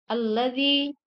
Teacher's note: Alladzi, dal bertemu ya, itu merupakan mad tabi'i. Cara membacanya dipanjangkan 2 harakat.